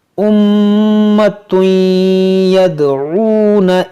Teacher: اور میم ہے مشدد تو اس میں غنہ کریں گے